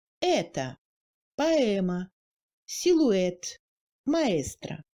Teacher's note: Accentué, le e ressemble à un e ouvert français, comme dans les mots être, elle, etc.